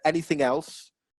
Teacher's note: said anything else that was uh that linked together didn't it anything else there was no pause between the two the thing and then you've got that consonant vowel linking again